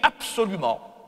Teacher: Le S va agir sur le B pour en faire un P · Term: assimilation régressive